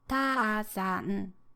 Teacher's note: you give the equal amount of time and stress to each letter, namely ta and the hyphen after it, and za and n. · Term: moras